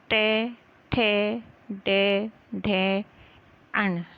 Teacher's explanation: जो दांत के पीछे का खुरदरा स्थान है मूर्धा, वहाँ पे हमारी जिह्वा स्पर्श करती है।